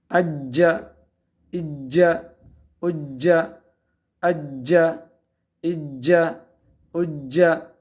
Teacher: اج اج اج، قلقلہ کرنا ہے اس میں، آواز کو حرکت دینا باقاعدہ اپنی طرف سے. جیم مشدد ہو تو اج، آواز حرف مشدد کو سختی کے ساتھ پکڑنا ہے، اور یہ چونکہ قلقلہ میں سے ہیں اس میں مزید حرکت دینی ہے۔